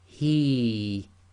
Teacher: And here we have hiya, which we're stopping on, so the ya goes sakin, so effectively it becomes the long vowel kasra ya, so this becomes he, too long.